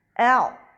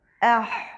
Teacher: عین اور ہا کا مخرج ایک ہی ہے، لیکن آواز میں فرق ان کی صفات کی وجہ سے ہے